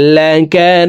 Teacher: এখানে নু 3 আলিফ টেনে দালকে সাকিন করতে হবে, কারণ মদের হরফের বামের হরফে ওয়াকফ হইলে মধ্যে আরজি 3 আলিফ টেনিয়া পড়িতে হয়।